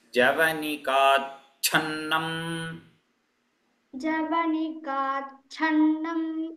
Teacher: the mahaprana cha should be heard. So say it as javanikachannam.